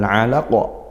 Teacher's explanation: ini qaf lagi kita baca qalqalah kubra, dipantulkan kuat